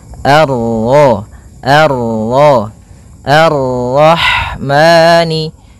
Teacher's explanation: bertemu dengan huruf ro yang berharakat tasydid maka rnya kita baca dengan tafkhim